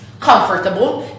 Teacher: with the stress on this first syllable and this middle syllable that doesn't exist